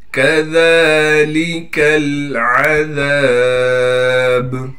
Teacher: ذال کو باریک کر کے پڑھنے کے ساتھ ذال کے بعد حروف مدہ میں سے الف ہونے کی وجہ سے ذال کو ایک الف کے مقدار کھینچیں گے